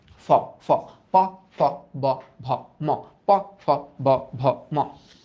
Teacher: যখন উচ্চারণ করতেছি তখন উপরের ঠোঁট আর নিচের ঠোঁট ঠাস করে বাড়ি খাইতেছে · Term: ওষ্ঠ